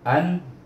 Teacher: hendaklah dibaca dengan izhar halqi. Itu hukum nun sukun, ataupun nun mati. Jadi baca an, tidak ada dengung, tidak ada panjang.